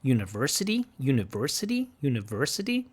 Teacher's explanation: she has this non- prevocalic R this rotic this American R university university university so some good